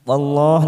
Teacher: lam jalalah ditoli fathah, kita baca tafkhim